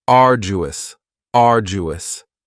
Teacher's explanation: you don't hear that D sound that much it's not very strong it almost sounds a little like a j · arduous has three syllables and the stress is on the first syllable uo now you don't hear that D sound that much it's